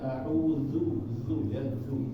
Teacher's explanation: Padahal seharusnya za ini ada di ujung lidah, bukan di tengah lidah.